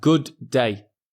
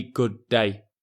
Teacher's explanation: Here we have good day, which is pretty much the same sound, the d sound. And instead, we'll only say it once, which is good day.